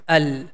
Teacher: Here we have the a sound, and this a sound is directly going to connect with a second connecting sign because the second connecting sign is more powerful. Here in this example, letter noon becomes silent, the sound becomes al.